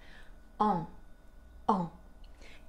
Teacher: Et pour le prononcer, on place la langue dans le fond de la bouche et on fait un son nasal